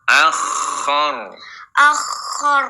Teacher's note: jadi kho-nya mengalir nafas, mengalir juga suaranya